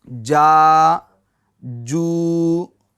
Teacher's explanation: बीच जबान और बीच तालू से जीम शी या अदा होते हैं। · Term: जीम का मखरज